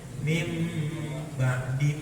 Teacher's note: Ganti nun atau tanwin diganti dengan mim. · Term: iklab